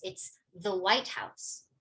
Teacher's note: if I'm talking about the White House, white will receive more stress than house